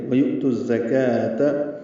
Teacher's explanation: زا تیز صفیر کی آواز سے ادا کریں گے، کاف باریک ہے، دو حرکات لمبا کریں گے.